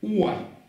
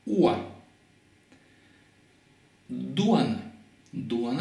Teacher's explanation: И я произношу УО вот так. УА. Не УО, а УА.